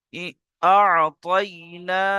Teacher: খালা জাবার আলিফ মাদ্দার সমান এক আলিফ টান হবে